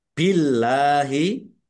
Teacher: Allahnya dibaca tipis karena harokat di depannya kasroh.